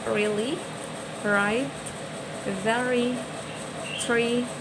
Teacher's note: voiced alveolar central approximant